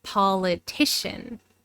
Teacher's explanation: So the third syllable has the primary stress. But notice that the first syllable has some secondary stress. We don't reduce this syllable to a schwa, like in the adjective political.